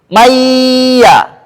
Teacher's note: yaqu lu ah ini langsung mayya mengucapkan dua huruf ya kan pengucapannya ini seperti ini mayya ah cuma ketika nunnya dirubah menjadi bunyi ya sifat dengunya tetap ikut tidak hilang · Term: idgham